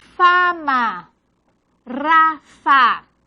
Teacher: labio dental porque labio inferior, los dientes superiores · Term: labio dental sorda